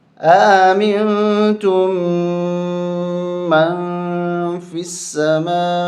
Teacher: اس مد کو 4 الف تک کھینچنا ہے، یہ مد متصل ہے